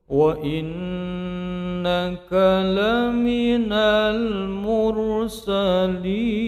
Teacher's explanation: Huruf R tebal, di bagian akhir terdapat mad arid lissukan untuk enam panjang vokal.